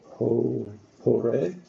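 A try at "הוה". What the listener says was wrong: It's actually the vav is hove. Hove.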